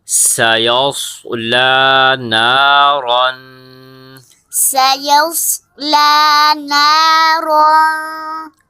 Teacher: را کے اوپر ہم نے غنہ کرنا ہے اور را موٹا بھی ہوگا